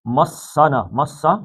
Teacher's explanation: مسا سین سے سیٹی کی آواز، سفیریا کہتے ہیں اس کو